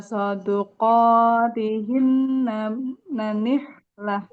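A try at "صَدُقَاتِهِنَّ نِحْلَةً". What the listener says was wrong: Jangan diulang nanih lah ya. Kalau umpamanya kita keliru nih. Pengen ngulang, jangan dari huruf terakhirnya aja. Lengkapkan satu kata. Soduqotihinna. Nggak boleh nanih lah. Kan soduqotihinna ini soduqotihinna nih lah.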